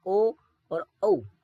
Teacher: उसके बाद कंठोष्ठ, कोई कोई वर्ड स्वर जो है वो गला और होठ दोनों से बोले जाते हैं, जैसे ओ और औ। ओ, औ जब आप बोलते हैं तब आपके गले में भी कंपन आएगा और होंठ को भी थोड़ा आपको बेंड करना पड़ेगा